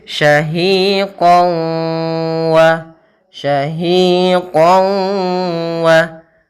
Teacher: cara membacanya yaitu masukkan tanwinnya ke huruf wau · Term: idgham bighunah